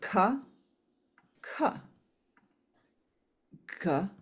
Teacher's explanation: This is the Kantya Varga, the velar or guttural Varga